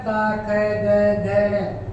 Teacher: का वर्ग जो हमारा होता है ये हमारा बोला जाता है कंठ से